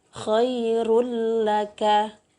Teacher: Hurufnya ada 2, yaitu lam dan ro. Jadi kalau ada nun sukun atau tanwin bertemu dengan salah satu huruf lam atau ro, maka cara bacanya tidak dengung. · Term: idgham bila gunnah